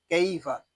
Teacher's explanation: یہاں پہ یا لین ہو رہا ہے، اس کو ہم کھینچ کر نہیں پڑھیں گے، اس کو کیفا یا کیفا اس طرح نہیں پڑھیں گے، اس کو پڑھیں گے کیفا۔